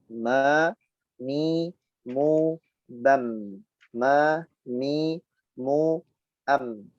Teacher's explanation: bibir kita sama, yaitu dalam keadaan tertutup, disertai khayshum, disertai keluar dari rongga khayshum, atau disertai dengan bunyi gunnah dengung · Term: huruf mim